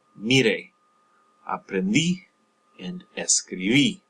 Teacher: Just push down, stress on that last syllable that you see in this past tense